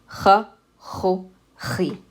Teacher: You're pushing the back of your tongue against the back of your mouth, slightly on the top of the roof of your mouth, but near the back.